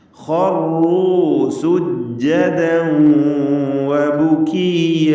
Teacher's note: മുശദ്ദദത്തായ റാ തക്രീർ കൂടുതൽ വരാതെ സൂക്ഷിക്കണം.